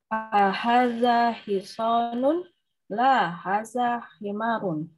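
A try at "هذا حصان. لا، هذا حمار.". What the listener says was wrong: Ya, betul. Lanjut.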